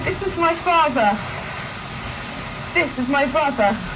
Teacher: al llevar la lengua al paladar para pronunciar la R, dejan de producir la vibración de las cuerdas vocales, por lo que el sonido que se produce es casi imperceptible.